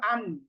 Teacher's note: জিহ্বার আগা তার বরাবর উপরের তালুর সঙ্গে লাগিয়ে হচ্ছে নুন। তো আমরা সুকুন দিয়ে যদি পড়ি হামজা নুন জবর আন, তো দেখেন জিহ্বার আগা কিন্তু উপরের তালুর সাথে লাগছে।